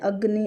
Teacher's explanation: अ में ज्यादा हम ताकत लगा रहे हैं। अग्नि अ में ज्यादा बल पड़ रहा है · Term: अधिक बल